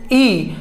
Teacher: इस ई के उच्चारण में जो जीभ है इसके आगे का भाग ही क्रिया कर रहा है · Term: अग्र स्वर